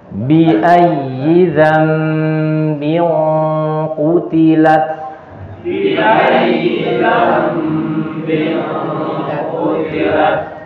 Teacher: hukum ikhfa, dan dia dibaca dengan gunnah tebal karena ini huruf yang isti'la